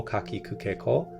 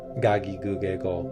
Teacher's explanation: a voiceless consonant is becoming voiced